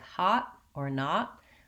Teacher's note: Hot, my tongue goes up and doesn't release. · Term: stopped t